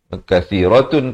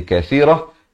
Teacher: Kathiratun, kalau kita waqaf jadi kathirah